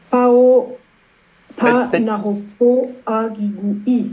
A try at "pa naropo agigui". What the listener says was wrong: Oui, pa naropo agigui. Ce n'est pas un pao, hein. C'est pa naropo agigui. Oui, ce n'est pas un pao. Parce qu'un pao, oui, c'est pour marquer le préfixe.